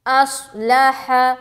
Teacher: حمزہ صاد زبر اس، لام زبر لا، ہا زبر ہا، اصلح، صاد میں موٹا ظاہر کریں گے، موٹا پن ظاہر ہونا چاہیے ، اصلح، ہا کو سینے کی طرف سے نکالیں گے، اصلح،